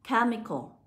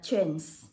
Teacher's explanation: Bởi vì âm CH lúc này chúng ta sẽ được đọc là âm K.